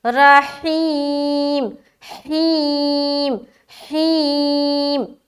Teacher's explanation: یا ساکن سے پہلے زیر ہے یا مدہ، لہٰذا ایک الف کے مقدار کے باقدر کھینچیں گے، لیکن ہا اچھے طریقے سے ادا کرنا ہے.